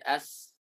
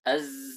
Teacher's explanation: Jahr tekanannya kuat. Sedangkan sin sifatnya hams. Hams itu lemah. Tidak ada tekanan sama sekali.